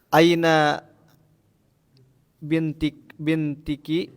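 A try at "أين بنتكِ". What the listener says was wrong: hukum asal harokat itu selalu domba. Maka dibacanya Aina bintuki.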